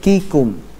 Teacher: Huruf kaf dan huruf ta dari segi aliran suara dia punya sifat syiddah, tapi dari segi aliran nafas dia punya sifat hams.